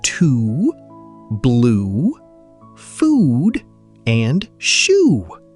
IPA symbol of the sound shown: uː